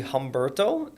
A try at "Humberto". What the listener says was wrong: Umberto. I believe we do not pronounce the H.